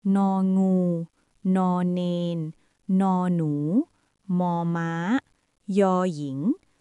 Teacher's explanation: pita suara bergetar tiada hembusan angin boleh dipanjangkan dan suara bergema